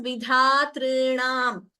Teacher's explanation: We should not say vidhatri. There is no dvitvam there.